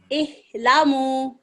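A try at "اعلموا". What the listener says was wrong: आइन की आवाज निकालें, हा की आवाज ना निकले।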